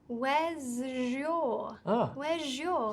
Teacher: This one is when the first word ends in the z sound, And the next word starts with y. So this one's a little bit different. This time we add the j sound.